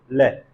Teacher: क्यों कहते हैं, क्योंकि जब हम ल का उच्चारण करते हैं जिह्वा आके अवरोध उत्पन्न कर देती है, और जो वायु है वो जिह्वा के दोनों बगल से निकलती है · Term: पार्श्व ध्वनि